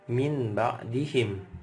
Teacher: karena ini iqlab nunnya berubah menjadi mim maka bacanya Mim [Musik] yang ini ada tanwin ketemu ba harusnya